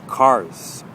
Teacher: with cars you can hear that kind of z sound at the end which means that our tongue is not quite touching the top of the mouth